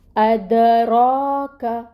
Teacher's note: کاف ڈنڈے والا کاف ہے، اس کو باریکی سے پڑھیں گے